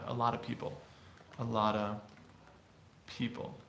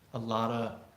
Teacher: lot of people but but that's definitely a common descriptive pronunciation dropping that F in the word of is something we do all the time